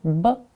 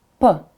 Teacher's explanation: I make the sound with my lips only, and I only add vibration. B, you see, lips right here, b, and p.